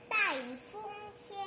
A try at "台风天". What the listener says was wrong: OK, 一旦, you say 台风天, okay, not ta, huh? Not, what did you say a while ago? You said that a different one. Tai.